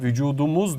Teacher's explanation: T sesinin yumuşayarak D sesine dönüşmesi ünsüz yumuşamasının bir örneğidir